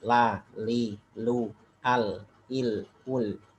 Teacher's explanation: Untuk huruf lam sendiri ya, lam itu asal hukumnya tarkik. Ya, tipis.